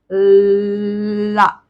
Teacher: ला का उच्चारण करते समय हमारी जीभ दांतों पर आती है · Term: पार्श्व व्यंजन